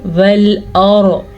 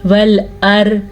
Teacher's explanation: را کو پر پڑھیں گے. وَالْأَرْ، اور یہ ہو گیا پر. اگر باریک پڑھیں گے تو غلط ہوگا